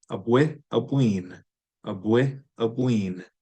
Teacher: You take the short I and lengthen it. Abwi, abween, abwi, abween.